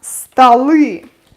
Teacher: o becomes unstressed and it's pronounced like a